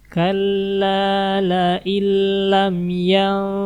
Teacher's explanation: nun mati ketemu tak. Ini ikhfa